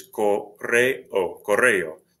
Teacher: The E and the O are separate syllables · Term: hiatus